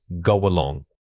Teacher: This link is very common and involves letting a slight glide of air connect the two words.